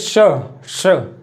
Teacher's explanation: तो हमारे जो जीभ है वो तालु से स्पर्श करेगी, और साइड हमारे मतलब बगल से श्वास वायु बाहर निकलती है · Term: तालव्य